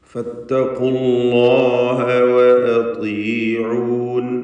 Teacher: ഫത്തഖൂ എന്നതിലെ വാവ് ഇൽത്തിഖാഉ സാക്കിനേന് വേണ്ടി കളയപ്പെടുന്നതാണ്, നമുക്കറിയാവുന്ന കാര്യമാണ്. അള്ളാഹ് എന്ന ഇസ്മുൽ ജലാലയിലെ ലാമിനെ തഫ്ഖീം ചെയ്യണം. തൊട്ടു മുമ്പിൽ ഉച്ചരിക്കപ്പെടുന്നത് ദമ്മാണ് എന്നതുകൊണ്ടാണ്. · ത്വാഇന് കസ്റുണ്ട്, കുറഞ്ഞ തഫ്ഖീം നൽകി ത്വാഇനെ ഉച്ചരിക്കുക · ഫത്തഖുല്ലാഹ ഖാഫ് തഫ്ഖീം ചെയ്യുക. ഫത്തഖൂ എന്നതിലെ വാവ് ഇൽത്തിഖാഉ സാക്കിനേന് വേണ്ടി കളയപ്പെടുന്നതാണ്